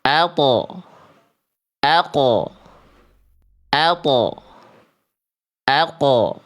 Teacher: Makanya bunyinya ab, aj, ade. Sedangkan to dan qaf itu huruf tebal. Maka pantulannya kan nggak dibaca ate, ake, tapi tebal.